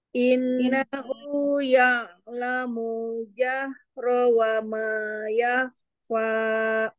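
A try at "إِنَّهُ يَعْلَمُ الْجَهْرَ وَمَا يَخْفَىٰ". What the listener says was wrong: Munya kenapa panjang lagi? Ya'lamul jahra. Ya alamul ke alam masuk ke alam ya alamul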